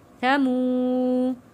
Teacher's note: حروف مدہ ہے، 1 الف کے برابر کھینچ کر پڑھیں گے